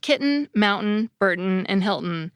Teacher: pronouncing the final syllable as a schwa plus an ordinary /n/, many speakers just do away with the schwa and basically turn the /n/ into the vowel, by using the syllabic /n/ pronunciation.